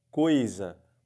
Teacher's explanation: Tapa o nariz e você percebe que a palavra fica igualzinha, tapando ou não o nariz. Por quê? Porque não sai som pelo nariz. · Um ditongo decrescente, né, do O para o I, e um ditongo oral. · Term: ditongo é somente oral